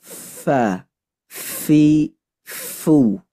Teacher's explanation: Jadi fa ini dia sanaya ulia, gigi seri atas ditempelkan dengan batanis syafah, dengan perut bibir. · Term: huruf fa